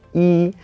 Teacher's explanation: whenever it's used as a number, it's just a plain first tone